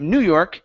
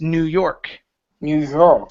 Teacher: the stress is on the end instead of New York it's New York New York y okay